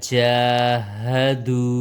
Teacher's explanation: وو مدہ ایک الف کے برابر لمبا ہوگا